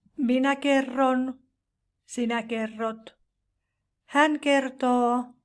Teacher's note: In consonant combinations RT, the T changes into R